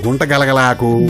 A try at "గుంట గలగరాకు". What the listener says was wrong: గలగలాకు కాదు, గుంట గలగరాకు. నీకు నోరు తిరగడం లేదు గాని ఉండు, దానికి కూడా ఒక ఆకుంది.